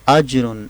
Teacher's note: جیم پر قلقلہ ہے، یعنی کہ جیم کو ابھار کے پڑھنا ہے